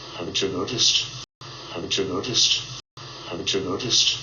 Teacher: waxaa ka dhexdhacayo linking, waa laisku xirayaa ama laisku qabanayaa. waxaa ka dhashanaya codkan ama waxaa loo maqlayaa sida tan sha sha, ch sound, codka ch.